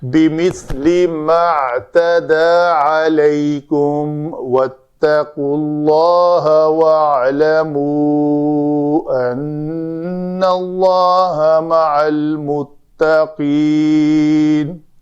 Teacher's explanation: نون مشدد ہے، اس کے لیے اس وجہ سے نون کے اوپر ہم نے غنہ کیا